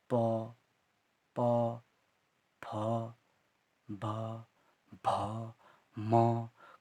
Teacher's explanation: ये हमारे पास 5 जो वर्ण होते हैं हमारे ओष्ठ से निकलते हैं। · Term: ओष्ठ से निकले हुए शब्द